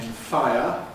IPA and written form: ˈfaɪ̯.ə (fire)